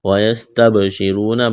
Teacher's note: با ساکن ہے، با پر قلقلہ کریں گے، را کو موٹا کرنا ہے، را کے اوپر پیش ہے، واو مدہ ہے، ایک الف کے برابر کھینچنا ہے۔